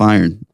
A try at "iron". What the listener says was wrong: It kind of sounds like you have a weird accent and you're saying earn. Like earning money or like just earn that you put ashes in.